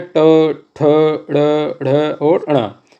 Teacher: मूर्धन्य मतलब मुंह के भीतर ऊपरी छत का अगला भाग। ये जो अगला भाग है ये मूर्धन्य कहलाता है।